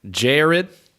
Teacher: With the Southern American accent, you would diphthong the A.